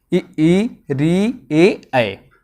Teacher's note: अग्र स्वर। मतलब जीभ के जो आगे के भाग से बोले जाते हैं स्वर